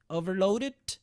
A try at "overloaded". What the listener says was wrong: You are missing the sound at the end. Overloaded, overloaded. You need that T. You see, it's a D there, but you can pronounce it as a T. Loaded, overloaded, or overloaded.